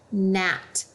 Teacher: We don't hear the G, we just hear the N. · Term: silent